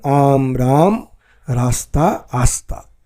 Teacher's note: বরেন্দ্রী উপভাষায় পদের গোড়ায় র এর লোভ অথবা আগম বা আগমন ঘটে